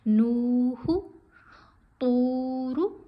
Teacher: نون کے اوپر پیش ہے، ساتھ واو ساکن ہے، حرف مدہ ہے، اس کو کھینچیں گے، ہا کو نہیں کھینچنا